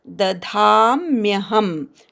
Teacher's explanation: मम योनिर नीवर आघात, महद ब्रह्म हवर आघात, ब्रवर आघात, तस्मिन् गर्भन तवर आघात, स्मीवर आघात, गवर आघात, अनुस्वाराचा न, तस्मिन् गर्भन दधाम्यहम, धा पूर्ण उच्चार करायचा, दधाम्यहम, शेवटचा म अर्धा आहे